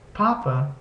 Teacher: Notice if you put your hand in front of your mouth, when you say papa, you can feel a puff of air